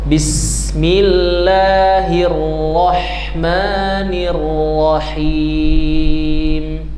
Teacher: Bismillahnya panjang dua harakat.